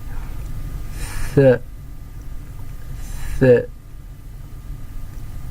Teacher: آپ کی جو زبان ہے وہ آپ کے اوپر کے دانت اور نیچے کے دانتوں سے ذرا سا باہر نکلے گی